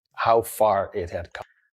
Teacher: Look at how how small he makes his stressed vowel in far.